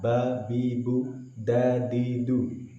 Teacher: Iya berat, atau iya. Na'budu, baknya, dalnya dibaca dengan suara yang ringan dan menahan desisan.